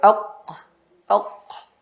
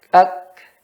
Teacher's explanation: Ok itu huruf ko. Ya, dan ko tidak ada anginnya. Pada k ada anginnya.